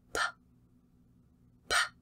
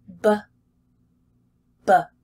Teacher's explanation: And if you keep your fingers here, for the P, there should be no vibration